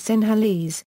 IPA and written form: sɪnəˈliːz (Sinhalese)